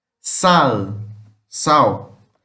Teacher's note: O nosso sal em português nós falamos como se fosse um som mais de U. Em espanhol realmente seria mais o L mesmo. A língua sobe para o céu da boca.